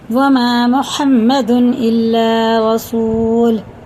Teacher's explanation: میم الف سے پہلے زبر ہے، میم کو یہ حرف مدہ ہے، میم کو ایک الف کے برابر کھینچ کے پڑھیں گے. یہ بھی اسی طرح سے، اور واو ساکن سے پہلے پیش، یہ بھی الٹے پیش کی طرح کھینچ کے پڑھنا، اور دونوں پیش ختم ہو جاتے ہیں.